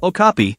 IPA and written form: oʊˈkɑːpiː (okapi)